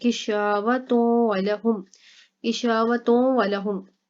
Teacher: اس کے بعد دیکھیں کشاوتوں ولہم، کشاوتوں ولہم، یہاں پر شا، یہاں پر الف مدہ ہو رہا ہے اور تا کے اوپر تنوین ہے، ٹھیک ہے، اور آگے دیکھیں حروف یرملون کا واو ہے تو یہاں پر گنہ کریں گے تا کے اوپر